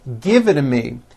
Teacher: the only big change comes from the teas being pronounced as D's and this happens because the t's fall between two vowel sounds